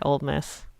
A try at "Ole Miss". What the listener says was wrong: It's actually Ole Miss. You said Old Miss.